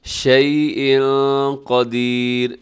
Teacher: اخفا ہو رہا ہے کیونکہ یہاں شیء پہ تنوین ہے، اور تنوین کے بعد آگے قاف ہے